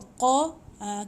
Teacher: qa ni macam jitu bunyi dekat anak tekak